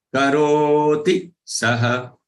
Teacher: Ro has to be long so that ti becomes short.